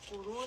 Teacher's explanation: With kuru, rest on that dal. Kuru, this is going to be a heavy ra and a 4-count med